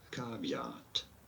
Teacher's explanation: I want to stress on the first syllable